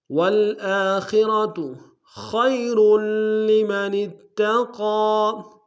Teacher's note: خا کو موٹا را کو موٹا ادا کریں گے